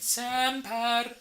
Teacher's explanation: I'd like a little one rolled R at the end. Semper. It's just a flick, not a rrr.